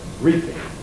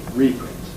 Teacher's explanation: There we get pre-fortis clipping of E because of the P being in the same syllable. The syllables are reap and ing.